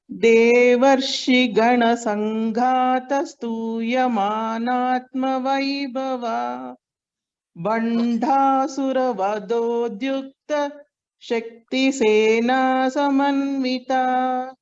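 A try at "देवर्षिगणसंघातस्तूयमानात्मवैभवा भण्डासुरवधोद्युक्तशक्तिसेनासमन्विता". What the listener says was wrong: You are chanting everything correctly. Just at the Mahaprana Aksharas, I will just chant the letter you repeat. Gha. Gha. Can you repeat gha? Bha. Dha. Dha. Ta, tha, da, tha. Now your whatever stress you put and you chanted, it was correct. So when you chant the verse also, you should put so much effort in Mahaprana.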